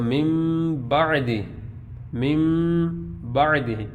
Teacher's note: ابھی ہم نے با کو نہیں پڑھا، میم نون زیر من، با عین زبر با، اب اس کو من نہیں پڑھیں گے بلکہ مم پڑھیں گے۔ نون ساکن یا تنوین کو میم سے بدلیں گے تو اس کو من نہیں پڑھیں گے بلکہ مم پڑھیں گے